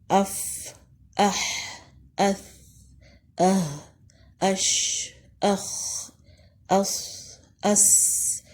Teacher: مخرج پر جانے کے بعد ان حروف پہ ہوا جاری رہتی ہے۔ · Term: حروف حمز